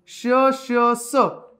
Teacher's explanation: बघा उष्मन, उष्मनचा अर्थच होतो वायू. मुखावाटे जोराने उसासा बाहेर टाकल्याप्रमाणे या वर्णांचा उच्चार होतो. यात घर्षण आहे, घर्षणामुळे उष्णता निर्माण होते, म्हणून त्यांना उष्मे म्हणतात. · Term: उष्मे किंवा घर्षक